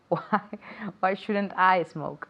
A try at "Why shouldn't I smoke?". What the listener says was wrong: Okay, quiero más duda en tu voz, porque es una pregunta al final, ¿no? Lo mismo en español, la duda.